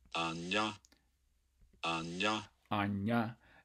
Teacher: it should basically sound like a combination of an N and a yod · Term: palatal